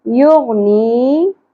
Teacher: نی مد اصلی, حرف مدہ یا ساکن, ایک الف کے برابر کھینچیں گے